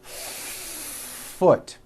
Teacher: do you see how long I'm holding that F